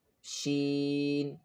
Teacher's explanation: Sheen is pronounced from the middle of the tongue touching the roof of the mouth.